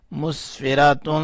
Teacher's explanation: میم سین پیش مس، فا زیر فی، مسفی، را زبرا، مسفرا، تا دو پیش تن، مسفراتن، تا کے اوپر جو دو پیشیں ہیں اس کے اوپر ہم نے اخفا کیا ہے، اس میں جو نون کی آواز آ رہی ہے اس کو ہم نے تھوڑا سا چھپا لیا